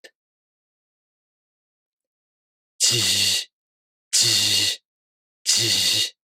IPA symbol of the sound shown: ʑ